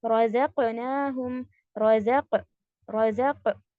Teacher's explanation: यहाँ पर रज़क़, स्टॉप, शिद्दा, उसके बाद अप, बाउंस, कलकला